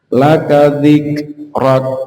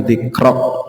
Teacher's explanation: kaf itu bukan termasuk qalqalah, jadi cukup ditahan saja. Laka dzikrak, bukan dzikrok.